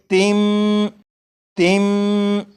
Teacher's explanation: जब तनवीन के बाद बा आ जाए तो तनवीन के अंदर जो नून साकिन की आवाज़ होती है उसे मीम से बदलकर गुन्ना करके पढ़ेंगे। जैसे यहाँ पर लिखा है तिन, इसे पढ़ेंगे तिम, तिम। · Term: इकलाब